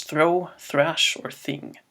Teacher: a sound that is known as the voiceless dental fricative